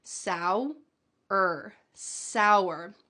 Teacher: It almost sounds like there's a W in the middle of this word